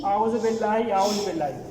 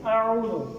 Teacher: तो आइन को उसके मखरज से निकालना है, हालांकि درمیان والے حصے سے، حلقے درمیان والے حصے سے عین کو نکالنا